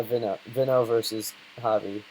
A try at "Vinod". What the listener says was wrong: No, not Vino. Vinod. V-N-O-D-H.